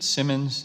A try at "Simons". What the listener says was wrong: It's Simons. One M, two S's.